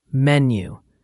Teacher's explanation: And menu has the stress on the first syllable.